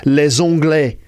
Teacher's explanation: In this case, it's a z sound in French, like les Anglais.